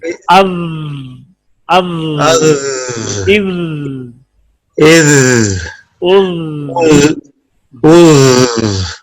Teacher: آواز کیوں جاری رہے گی؟ کہ اس میں رخوت ہے